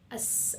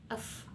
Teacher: bunyi tak bersuara, yaitu tidak disertai dengan getaran pita suara, atau dalam bahasa Arabnya disebut hams atau mahmus.